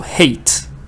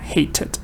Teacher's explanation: hated, it's two syllables, right? Because you're getting a vowel, little vowel here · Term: extra syllable